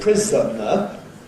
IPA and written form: ˈprɪzənə (prisoner)